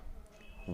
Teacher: वकार से दंतोष्टम, वह का उच्चारण स्थान दंतोष्ठ है, दंत और ओष्ठ है